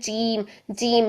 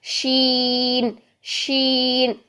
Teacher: شین میں کیا ہوتا ہے کہ زبان کا درمیان ہی ہے یوز ہونا اور اوپر درمیان تالو ہی یوز ہونا ہے، لیکن کیا ہوگا، مائنر سا گیپ ہو جائے گا، مائنر سا فاصلہ ہو جائے گا، تھوڑا سا فاصلہ رکھیں گے. جیم کی طرح اوپر جا کے بالکل ٹچ نہیں کریں گے بلکہ شین کے لیے تھوڑا سا فاصلہ رکھ لیں. شین، شین، زبان کا درمیان اور درمیان تالو کے درمیان مائنر سا ہلکا سا فاصلہ ہے، جیسے ہوا سے یوز کریے اتنا سا فاصلہ، تو ہمارا شین ادا ہوگا.